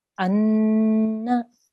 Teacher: You need to hold it's a noon mushaddad, which means you have to make a nasal sound.